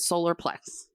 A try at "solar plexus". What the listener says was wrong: So it is us. Plex us. There's a US on the end.